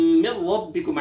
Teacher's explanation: मिर रब्बिकुम नून साकिन के बाद रा है जो कि हुरूफ यरमलून में से, लिहाजा यहाँ इदगाम तो किया जाएगा, गुन्ना नहीं किया जाएगा।